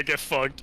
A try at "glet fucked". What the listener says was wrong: No, not get fucked. Glet fucked.